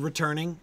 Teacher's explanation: we've got that word returning which has the emphasis in the middle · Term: stressed syllable